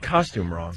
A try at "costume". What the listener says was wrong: It's costume. Costume. Costume.